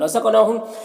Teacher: قاف حروف قلقلہ میں سے بھی ہے تو قاف میں قلقلہ بھی ہوگا